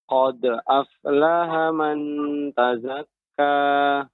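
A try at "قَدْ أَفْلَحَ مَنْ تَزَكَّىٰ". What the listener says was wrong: Lidah kita tidak boleh lengket ke langit-langit. Kalau kita lengketkan jadi manta.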